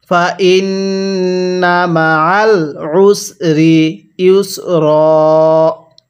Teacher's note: আইনটা পড়ার সময় আমরা গলার মধ্যে একটু চাপ দিয়ে পড়ব, তাহলেই এই আইনটা সহি শুদ্ধ উচ্চারণ হবে, অন্যথায় আইনটা হামজা উচ্চারণ হয়ে যাবে।